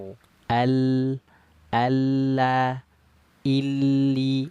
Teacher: ujung lidah yang naik ke langit-langit itu Itulah yang buat si bunyi huruf lamnya dia membelok membelok ke sisi kiri dan kanan lidah Kenapa karena terhalang oleh ujung lidah yang naik ke langit-langit tadi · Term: sifat alinhiraf